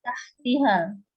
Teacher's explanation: nun mati bertemu dengan huruf ikhfa hakiki yaitu ta, dibaca sama-sama